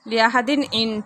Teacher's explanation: تنوین کے بعد عین آ رہے تو اظہار ہو رہا ہے